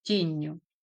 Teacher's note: Н стоїть в позиції між двома голосними і тому воно подовжується. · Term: подовження